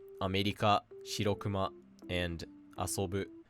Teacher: So, first is the heiban pattern and it essentially just means flat board, which starts low, rises on the second mora and stays high until the end of the word. You can essentially think of this as the flat pattern and some examples are America, Shirokuma, and asobou.